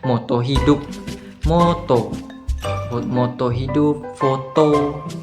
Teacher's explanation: vokal O masih berada pada posisi madia namun ia kini pada posisi yang sedikit ke atas